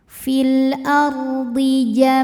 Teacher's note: Fil ra sukun dibunyikan secara tafkhim sebab huruf sebelumnya berbaris fathah, maka dibacanya tebal